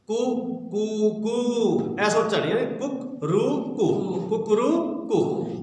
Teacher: यानी तो सबसे पहले ह्रस्व, फिर दीर्घ, फिर प्लुत